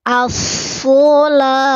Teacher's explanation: Isti'la, terangkat pangkal lidahnya. As-sholah. Mesti ada hembusan napas.